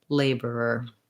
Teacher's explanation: word laborer is challenging because it has the er er combination at the end so i have to do back-to-back er sounds